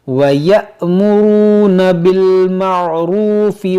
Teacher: یہاں پر دیکھیں حمزہ ساکنہ ہے، اس کو جھٹکا دے کر پڑھیں گے